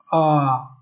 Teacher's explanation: सबसे पहले आप लोग जान लीजिए, पश्च जिसमें जीभ का पश्च भाग काम करता है उसे हम लोग पश्च स्वर कहते हैं